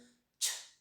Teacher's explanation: Voiceless यामुळे आहे की आपले व्होकल कॉर्ड व्हायब्रेट होत नाहीत.